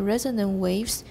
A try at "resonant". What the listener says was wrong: Resonant, watch the stop. Resonant, wait, in the resonant waves. Your T is still not clear enough.